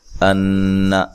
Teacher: نون مشدد پہ غنہ ضروری ہے، لمبا نہیں کرنا نون کو،